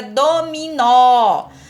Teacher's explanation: Então, isso significa que do, mi são sílabas átonas. E o nó é sílaba tônica, porque é a mais forte, é aquela que a gente pronuncia com mais intensidade.